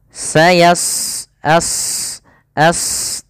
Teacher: huruf sad salah satu sifatnya adalah istila yaitu pangkal lidah terangkat yang kedua eh apa namanya eh idbaq idbaq itu berarti terangkatnya